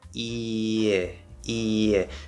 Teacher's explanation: Because it's dropping, and there's a little bit of tension that happens here around the Y position, but as you're dropping, we get that little bit of a Y sound as we leave the E position